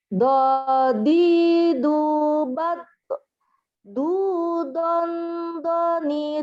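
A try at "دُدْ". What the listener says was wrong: Jangan doni, dode. Jangan kol-kolah ya. Doni, dod. Doni, dod. Karena ini bukan kol-kolah ya. Bukan kol-kolah. Doni, dod.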